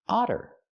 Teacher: We see the double T making the fast D sound because they're between vowels.